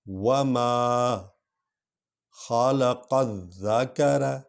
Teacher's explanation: زال پر سٹریس ہونا ہے، زور ہی آنا ہے